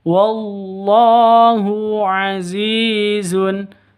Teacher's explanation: Zi panjang 2 ketukan karena ada ya mati diawali dengan kasroh. Ini namanya mad asli, mad atau mad tabi'i.